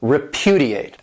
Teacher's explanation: This verb has 4 syllables, and the stress is on that second syllable